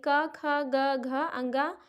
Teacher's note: तो ये जो इतने वर्ड हैं ये सब कंठ से बोले जाते हैं